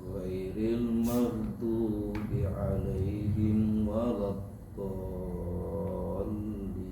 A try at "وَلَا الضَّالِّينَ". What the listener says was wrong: kurang panjang dipanjangin lagi 6 harokat waladdall